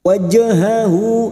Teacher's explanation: Jim sukun qalqalah sugra yang mati asli di tengah kalimat jangan lupa dipantulkan.